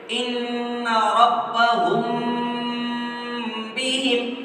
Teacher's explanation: میم ساکن کے بعد میں اگر با آئے گا تو اکفاء شفوی ہوگا۔ میم ساکن کو گنہ اور اکفاء کے ساتھ ناک میں چھپا کر پڑھیں گے